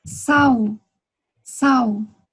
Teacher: L, el final de las palabras, se pronuncia como si fuera U